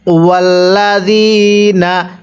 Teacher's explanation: জালের মধ্যে 1 আলিফ টানতে হবে, জেরের পরে ইয়া সাকিন 1 আলিফ টানতে হয়